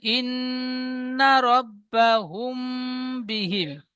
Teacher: মিম সাকিনের পরে বা এসেছে, তাই মিমকে এক আলিফ পরিমাণ গুণনা করে পড়তে হবে। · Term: ইকফায়ে সাফাবি